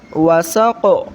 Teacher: کیونکہ آخر میں قاف ہے تو تھوڑی سی حرکت دیں گے